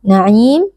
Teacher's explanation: ada alif lam bertemu dengan huruf nun yang menjadi huruf Syamsiah alif lam lebur ke dalam Nun dan Nun menjadi Nun bertasdid maka di sini kita baca dengan gunah atau dengan dengung